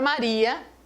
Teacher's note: O A é vogal e o I, a tendência dele é semivogal. Só que na palavra Maria, o I ele recebeu o direito de ser vogal porque ele é a tônica